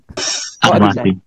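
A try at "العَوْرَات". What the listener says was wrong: Kok dibalik?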